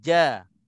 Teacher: Jadi kalau kita letak baris ja. Dia ada sentuh tengah lidah ke langit.